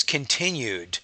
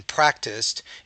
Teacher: So I have a D sound, and then practiced, it's more of a T sound. So the ED ending will change in its pronunciation based on the environment there.